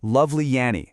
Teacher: Lovely Annie needs that little ye bridge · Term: insertion